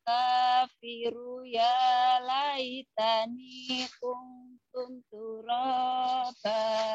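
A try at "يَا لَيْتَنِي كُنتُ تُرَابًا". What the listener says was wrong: Bukan kuntum. Salah. Jangan kuntum. Kuntuk. Gak ada tumnya ya.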